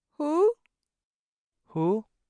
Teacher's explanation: this is a second tone word, the person upstairs' tone, a rising tone.